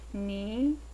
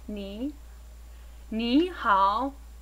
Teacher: Begin mid-range or mid-pitch and then rise slightly in pitch. Ni. This is the second of 4 tones that you will need for Chinese. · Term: rising tone